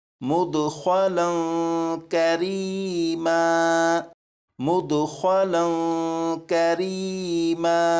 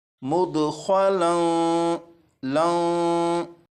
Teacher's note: आप ये बताइएगा कि यहाँ पर जो मैंने लाम को पढ़ा मुदखलन लं, यहाँ पर लाम पर मैंने गुन्ना भी किया और गुन्ना इस तरह किया कि ज़बान को तालू से हटाकर गुन्ना किया